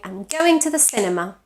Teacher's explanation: In this sentence, there are only 2 words that are stressed, going and cinema